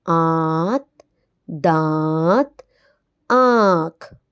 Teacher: हमने देखा कि इन अल्फाज में नून गुन्ना की आवाज नाक में आई है